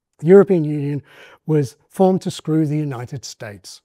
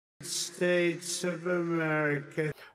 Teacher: a pattern with a low fall at the end, a downstepped fall at the end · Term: Thatcher downstep